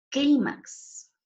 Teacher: Miren, no termina ni en N, ni en S, ni en vocal y lleva mayor fuerza de voz en la penúltima sílaba. Clímax, ¿cierto? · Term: sílaba tónica